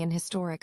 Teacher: Some speakers drop the H, making an historic appropriate.